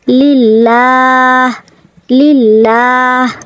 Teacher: এখানে আমরা লা বলবো কারণ লামে আল্লাহর ডাইনে এখানে জের রয়েছে। লামে আল্লাহর ডাইনে জের থাকলে লামে আল্লাহ পাতলা হবে, মোটা হবে না। এখানে আমরা আকার ধরে, বাংলায় আকার ধরে পড়ব লিল্লা।